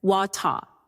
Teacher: In some British accents, water, the R is dropped.